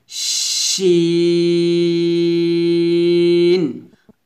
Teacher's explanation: যখন শিনটা উচ্চারণ করবেন একটু এই ধরনের একটা শীষ বের করবেন, এভাবে শিন।